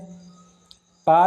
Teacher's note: पा ध्वनि का उच्चारण स्थान है होष्ट